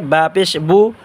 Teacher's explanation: বা পেশ বু হবে ঠোঁটের ভিজা অংশ থেকে